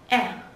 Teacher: Đây là âm nguyên âm đơn, e thả lỏng. Chúng ta sẽ lấy hơi sâu và thả hơi từ từ ra, e.